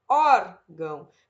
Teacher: paroxítona vai ser a penúltima sílaba mais forte